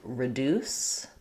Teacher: She's letting us know a few words that do say the true D in the middle, like reduce. So it's stressed on that D syllable, so it does do a true D